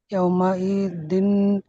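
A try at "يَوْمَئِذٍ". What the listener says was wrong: না, এটা জাল জাল, ইয়াউমা ইজিন, বলেন।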